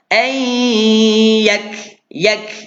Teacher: kaf mati ada tanda, keluarkan percikan angin dari huruf kaf